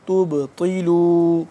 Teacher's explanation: تا کو پڑھیں گے باریک، اور آگے طا موٹا ہے، اور درمیان میں جو با ہے اس پہ ہم کریں گے قلقلہ ، تا با پیش تب، طا زیر طی، تب طی لو،